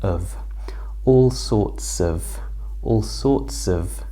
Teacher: now this of becomes an ER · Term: schwa